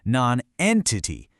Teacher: Nonentity has exactly four syllables, with the emphasis hitting hard right on the second one.